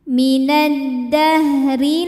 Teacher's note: Huruf ra dibunyikan secara tarqiq sebab ra berharokat di bawah kasrah. Cara bacanya ra dibunyikan dengan tipis ya. Jadi pangkal lidah datar, tidak perlu ditegangkan.